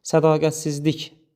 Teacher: vurğusu sonuncu hecəyə düşür